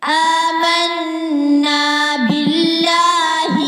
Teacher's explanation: اللہ کے نام سے پہلے زیر آ رہی ہے تو باریک پڑھیں گے